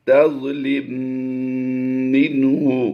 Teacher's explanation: میم ساکن کے بعد جب دوسری میم آتی ہے تو وہ مشدد پڑھی جاتی ہے، اور میم مشدد میں ہمیشہ غنہ ہوتا ہے۔ منہ، نون ساکن کے بعد حروف ہلکی سے ہا آ گیا، تو یہاں پر اظہار کرتے ہوئے ہم نے پڑھنا ہے، یعنی غنہ نہیں کرنا۔